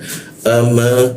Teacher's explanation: A posisinya di tenggorokan bagian bawah dia huruf alif atau hamzah ya. ama, bibir bertemu bibir.